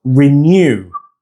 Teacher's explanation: That ny sound in renew is one smooth sound inside the second syllable.